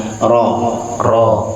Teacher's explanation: Kalau dia nggak bertasydid getarkan ya ra, tapi getaran yang alami. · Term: takrir